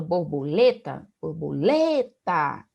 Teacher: eu consigo observar que lê é a sílaba mais forte, né? As demais sílabas têm um som com menor intensidade, então elas funcionam como sílabas átonas. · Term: sílaba tônica